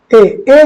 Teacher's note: ए जो है ये आपका कंठ और तालु दोनों से बोला जाता है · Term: कंठ तालव्य